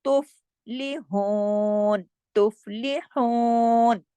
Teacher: فا پہ کلکلا نہیں کرنا، کیونکہ فا جو ہے وہ کلکلے والا حرف نہیں ہے